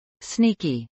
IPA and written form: snˈiːki (sneaky)